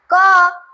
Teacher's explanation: और जो कंपन नहीं करता, कम मात्रा में करता है, जिन वर्णों का उच्चारण में स्वयंवर गला कंपन नहीं करता है, वो कंपन करता ही नहीं है। क डायरेक्ट बोलता है लेकिन कंठ पर कंपन नहीं करता है